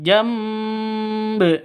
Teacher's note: Jamba ini bacaan ko iklab karena ada nun mati bertemu dengan ba, jadi bil jamb. Jadi nun matinya itu berubah menjadi mim mati